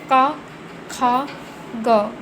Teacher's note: इसमें जीवा के मूल का स्पर्श होता है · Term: जीवा मूली